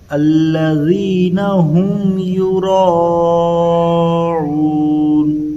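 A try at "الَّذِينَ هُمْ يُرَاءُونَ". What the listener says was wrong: عین کی آواز آ رہی ہے، اس میں عین کی آواز نہیں آنا۔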